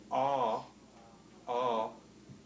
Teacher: Ah is a low vowel because the tongue body is low.